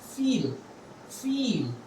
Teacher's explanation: this e sound is an elongated sound of e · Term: longer version